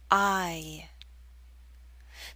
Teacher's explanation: there's a slight Y sound, y, that makes the glide possible, I. This long I sound is usually spelled with an I or IE, although there are other spellings.